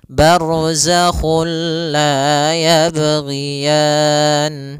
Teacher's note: juga sendiri itu idgam yang kita namakan juga idgham Kamil yaitu kita memasukkannya secara utuh secara seluruhan kepada huruf lam sehingga tidak menyisahkan sedikit daripada bunyi huruf nunnya